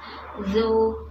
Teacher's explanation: Huruf berikutnya ada huruf zal, ujung lidah keluar sedikit ya, ujung lidah bertemu dengan ujung gigi saya di atas. Zu, dan huruf zal juga huruf tipis.